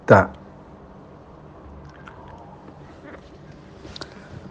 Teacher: Makhrajnya huruf ta, pojok lidah atau ujung lidah dengan akar gigi tengah atas, atau dengan kata lain tempat menancapnya gigi tengah atas.